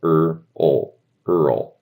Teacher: the word Earl, which is a name, is literally just R plus dark L